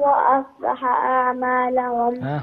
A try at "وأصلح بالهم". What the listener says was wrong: بالهم وليس أعمالهم. أحسنتي.